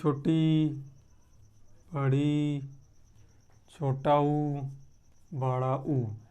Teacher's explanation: ठीक, संवृत्त स्वर, इसमें मुख कम खुलता है, इसमें उच्चारण वर्ण है छोटी, बड़ी, छोटा ऊ, बड़ा ऊ। इन चारों का उच्चारण करने में मुख को ज़्यादा नहीं खोलना पड़ता, इसलिए इसको कहते हैं संवृत्त स्वर